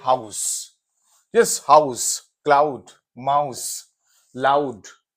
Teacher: अब इसमें एक है आ उ, एक आ है एक उ है, तो आउ।